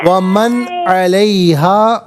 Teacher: علیہا میں ہا الف زبر ہا، اس کو ذرا کھینچ کے پڑھیں گے، ایک الف کی مقدار